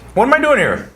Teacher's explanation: the vowels reduced to almost nothing